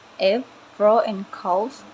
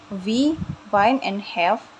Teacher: air is forced through the upper teeth and lower lip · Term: fricative